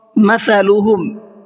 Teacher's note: جب ہم زبان کی نوک کو سامنے والے اوپر کے جو 2 دانت ہیں، اوپر کے سامنے والے جو 2 دانت ہیں، جب ان سے ٹچ کریں گے زبان کی نوک کو تو ہمارا ثا نکلے گا، وہاں نہ سین کی آواز نکلے گی نہ صاد کی آواز نکلے گی۔